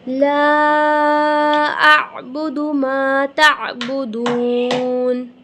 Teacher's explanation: لام الف مدہ، اسے ہم 5 الف کے برابر کھینچیں گے، عین کی آواز کلیئر پروناؤنس کریں گے، دال پیش دو، دال پیش دو ہوتا ہے، دال واو پیش دو، ٹھیک ہے، ایسا نہیں ہے۔